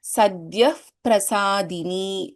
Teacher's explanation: there is Pa here and we have a Visarga, so there is the Upadhmaniya.